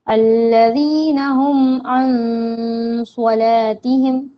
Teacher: नून साकिन से पहले स्वाद है तो इसलिए यहाँ पर हम नाक में आवाज छुपाएंगे, गुना होगा।